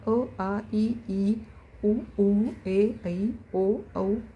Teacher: कुठेही आपली जीभ ही आपल्या टाळूला दातांना कशालाही लागत नाही. किंवा आपले ओठही भेटत नाही. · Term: स्वर